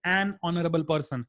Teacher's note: We don't say a honorable person. We say an honorable person because the word honor is pronounced with the start as a vowel.